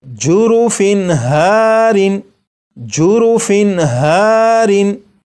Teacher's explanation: یہاں پر تنوین کے نون ساکن کو ظاہر کر کے پڑھا گیا